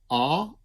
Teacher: if I say ah I put my tongue in the back more in the back